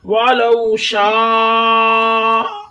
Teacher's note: شاہ اللہ ایک لفظ ہے، یہ پورا ادھر سے لے کے یہاں تک ایک لفظ ہے، یہ حمزہ اسی کلمے میں آ رہا ہے الف مدہ کے بعد، یہ الف مدہ ہے، الف مدہ کے بعد حمزہ اسی کلمے میں آ رہا ہے تو یہاں مد متصل ہو رہا ہے، چار حرکت یعنی 4 سیکنڈ تک کھینچ کر پڑھیں گے